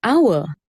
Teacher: the word hour starts with the consonant h, but begins with the vowel sound ow, so the h is silent.